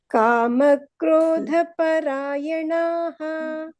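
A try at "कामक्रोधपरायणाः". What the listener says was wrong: ಅಲ್ಲಿ ನ ದೀರ್ಘ ಬರಬೇಕು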